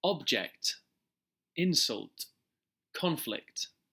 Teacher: The first syllable in the following words are stressed.